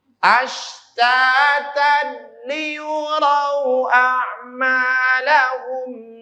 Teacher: Maka bunyi tannya, bunyi tan, baris fathatainnya, tanwinnya dileburkan ke huruf lam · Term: idgham bila guna